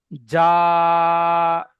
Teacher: খাড়া জবর আলিফ মাদ্দার মত এক আলিফ পরিমাণ টান দিয়ে পড়তে হবে।